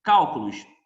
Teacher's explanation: A sílaba tônica é a antepenúltima, eu acentuo sempre. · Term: proparoxítona